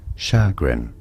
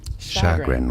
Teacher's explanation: So in British English it is said as chagrin. Chagrin with a stress on the first syllable, and yes, it's a sh sound, not a ch sound, because it's French, and ch in French is sh, not ch.